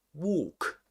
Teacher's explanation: in the verb walk, the L is silent. You never pronounce it.